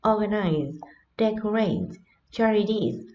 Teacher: Trọng âm nhấn ở đầu